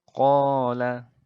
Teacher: Jadi mad asli atau mad tabi'i ini itu membacanya adalah dengan cara dipanjangkan sepanjang 2 harokat